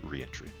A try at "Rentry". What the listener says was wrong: I think you're the first person I've seen pronounce it re-entry. Well, that would require an extra E. I think it's just rentry.